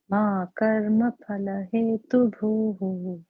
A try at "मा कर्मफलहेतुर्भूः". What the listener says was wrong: No, hetur bhuhu. Hetur, that R should be hetur, hetur bhuhu.